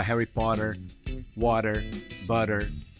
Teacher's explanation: O T, né, de water, butter, Harry Potter, né, que lá vira Harry Potter, water, butter. Curiosamente, todos eles têm um R no final, que é pronunciado, e no britânico não.